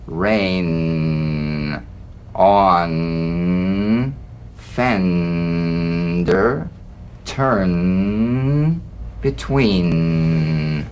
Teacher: the N is a nasal consonant made with the tongue blade to the upper gum Ridge it's most resonant and it's well forward placed it's a melodic